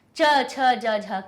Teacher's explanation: इसीलिए देखो कि पहले वर्ग जब बनाते हैं व्यंजन के तो पहली लाइन का वर्ग की आती है, दूसरी लाइन फिर हमारी चा वर्ग की आती है, च छ ज झ, क्योंकि दूसरे नंबर के स्थान से निकल रही है। ठीक है, दूसरे नंबर के तालु से ये चा वर्ग की अक्षर निकलते हैं, इसीलिए इसको तालव्य भी कहते हैं, तालु से स्पर्श होने वाले